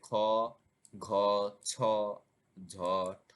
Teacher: উদাহরণ অর্থাৎ প্রতিটি বর্গের দ্বিতীয় এবং চতুর্থ ধ্বনি হচ্ছে মহাপ্রাণ ধ্বনি এই ধ্বনিগুলো উচ্চারণের সময় শ্বাস নির্গত হয় অধিক সময় ধরে তাই এদেরকে মহাপ্রাণ ধ্বনি বলা হয়